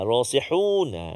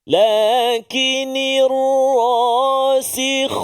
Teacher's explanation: Jadi kena pasti betul-betul ha di tengah rongga kerongkong kita, kha di permulaan rongga kerongkongan kita.